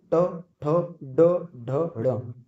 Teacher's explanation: ट ठ ड ढ ण, मूर्धा से जीभ टच हो रही है